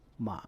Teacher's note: The third tone is a falling, then rising tone, represented by the tone number 2-1-4.